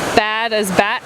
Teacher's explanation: Final consonant can be devoiced, so bad as bat.